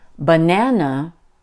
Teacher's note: So when I say banana, can you hear that the second syllable, nan, is stronger and higher pitched than the first, ba, and the last, na? I guess that's what makes English sing-songy. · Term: stressed